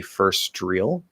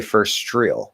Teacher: the ST at the end, the T will commonly disappear